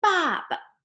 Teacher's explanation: this one with no tones, we call it the fifth tone, but it's very short and fast